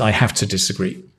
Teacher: You can't contract it because it's stressed.